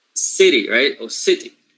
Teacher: the first syllable is stressed